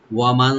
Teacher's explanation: ওয়া ওপেন রাখবেন, মিম ওপেন রেখে নুন সাকিন এখানে আমরা ইখফা করব।